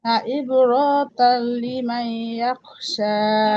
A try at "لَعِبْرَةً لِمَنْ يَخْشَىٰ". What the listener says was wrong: عبرة রতে টান হবে না তো। عبرة।